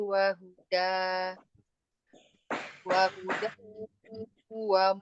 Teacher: Hudau ada tanwin bertemu dengan huruf waw, tanwin bertemu dengan huruf waw, idgham bi gunnah.